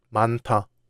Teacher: In 많다, the final 히읗 is followed by 디귿, so 디귿 becomes 티귿. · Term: 유기음화